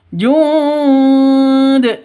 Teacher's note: nun mati bertemu Dal samar didengungkan siap-siap ke huruf dalnya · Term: ikhfa Hakiki, Ikhfa hakiki